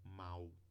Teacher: mesmo escrevendo um l aqui no advérbio a gente pronuncia com ditongo